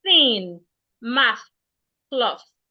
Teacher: when an average Nigerian or an average Ghanaian wants to pronounce the words, they pronounce them with a T. So for example, you hear something like tin or mats or cloths instead of thin, math, cloth.